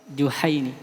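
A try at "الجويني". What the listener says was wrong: Juwai. Bukan Juha. Juwai.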